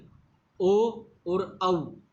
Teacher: अर्थात ओ और औ यह कंठोष्ठ से बोले जाते हैं।